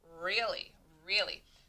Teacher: when i say this word really i hear long e in two places